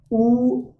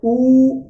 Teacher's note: You can see it also lies in the back area, so position of tongue is back, height of tongue is close, and the position of lips ooh, close rounded, just you can also say rounded but close rounded, ooh.